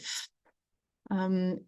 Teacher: C'est un feu où les l'air euh passe à travers les langues très les lèvres très légèrement entrouvertes, hein. Donc le souffle passe à travers les lèvres très légèrement entrouvertes.